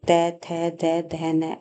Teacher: त का उच्चारण करते हैं तो जीवा हमारे दांतों को स्पर्श करते हैं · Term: त वर्ग